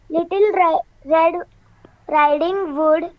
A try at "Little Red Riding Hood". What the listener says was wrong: हुड. हुड. वुड नहीं, HOD.